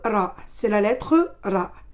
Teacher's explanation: le bout de la langue vibre légèrement